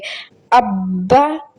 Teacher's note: دیکھیں با پہ مشدد ہے، اس پہ رکیں گے اور سختی کریں گے